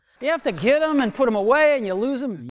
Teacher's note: you'll notice that the th sound is basically silent